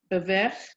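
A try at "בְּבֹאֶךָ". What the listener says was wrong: No, so that has 4 syllables, that word. What's the first syllable? Second? Vo. That's it. Now the whole thing?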